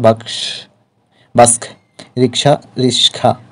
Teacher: শব্দের মধ্যে দুটি ব্যঞ্জন পরস্পর পরিবর্তন, জায়গা বদল বা বিপর্যয় ঘটলে তাই মূলত ধ্বনি বিপর্যয়। অর্থাৎ দুইটি ব্যঞ্জন ধ্বনির মধ্যে জায়গা বদল হবে বা পরিবর্তিত সাধন হবে।